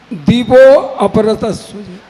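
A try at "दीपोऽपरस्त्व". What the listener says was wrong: अभी उच्चारण में वहां पे अ का लोप हुआ है। हाँ, उच्चारण में अ नहीं आएगा।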